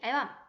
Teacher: 긴 소리를 가진 단어라도 첫 음절에서만 긴 소리가 나타난 것을 알 수가 있습니다.